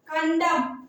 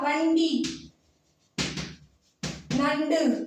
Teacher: நாவின் நுனி மேல்வாய் அண்ணத்தின் நடுப்பகுதியை தொடும். அது நீங்க சொல்லும் போதுதான் உணர முடியும்.